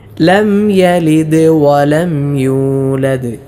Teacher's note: ലം യലിദ് ലംയലിദ് ഇങ്ങനെ പലരും ഓതാറുണ്ട് മണിച്ചുകൊണ്ട് അങ്ങനെ മണിക്കാൻ പാടില്ല കാരണം ലം സുക്കൂനുള്ള മീമാണ് ശേഷം യാ വന്നതിനാൽ ഇളഹാർ ചെയ്യണം മണിക്കാതെ വെളിവാക്കിയാണ് ഓതേണ്ടത് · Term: ഇദ്ഹാർ